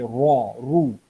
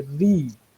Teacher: जब जबर या पेश के साथ आएगा तो बोल्ड पढ़ेंगे रॉ, रू. जब जेर के साथ आएगा तो लाइट पढ़ेंगे री.